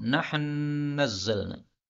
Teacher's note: nahnu nazzalna. Nun ketemu nun, ini boleh idgham.